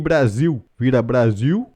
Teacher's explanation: é comum trocar o l no final por U em que Brasil vira Brasil e usar o r retroflexo a · no interior de São Paulo e na maior parte de Minas Gerais vigora o sotaque caipira em que é comum trocar o l no final por U